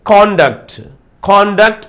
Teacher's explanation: Conduct అనే word noun గా వాడినప్పుడు స్ట్రెస్ ఎక్కడ రావాలి? ఫస్ట్ సిలబుల్ పైన రావాలి స్ట్రెస్ అనేది.